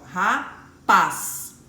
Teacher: eu consigo entender que paz é a sílaba mais forte